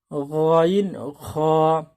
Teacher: তিন নম্বর মাখরাজ হলকের শেষ হইতে গাইন খ